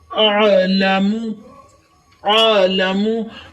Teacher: आइन को अलिफ की तरह अदा नहीं करना, ये हलक के दरमियाने हिस्से से अदा होता है। हलक के दरमियाने हिस्से में जो जोड़ है, हड्डी है, उसके ऊपर आप अपनी उंगली को टच करें, पकड़ें और वहां से आवाज निकालने की कोशिश करें।